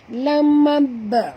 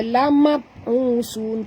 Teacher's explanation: ba sini mati di tengah-tengah kalimah, jadi kita kena baca lantun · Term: qalqalah